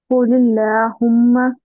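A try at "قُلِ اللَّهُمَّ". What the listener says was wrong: ला नहीं, कुलिल्लाहुम्मा। ला बोलना है, लॉ मोटे को, ला बारीक को, ले नहीं। ले बोले तो मजहूल हो जाता हो। कुरान मजहूल नहीं पढ़ा जाता। कुलिल्लाहुम्मा।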